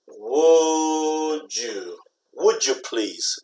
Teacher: When you have a dy combination becomes like a J.